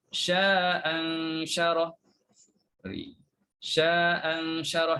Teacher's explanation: bila baca sambung sya'an syarah, maka buanglah satu hamzah. Kita buang yang pertama.